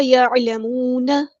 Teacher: نون کی زبر کو ہم لمبا نہیں کریں گے